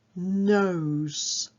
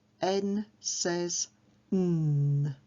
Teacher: It's a nasal sound, and I get children to touch their nose to help them to remember that N goes through the nose.